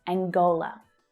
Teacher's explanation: The stress is on the second syllable but notice as well that the consonant sound /ŋ/ is there